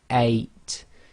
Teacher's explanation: you should feel that your throat blocks a tiny bit right at the beginning that's known as the glottal stop